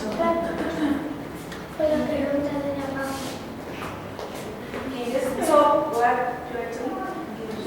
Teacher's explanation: pronounce stop what you're doing fully and reduce the pronunciation of the other words